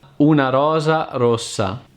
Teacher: a single R as in Rosa Rose is a short single vibration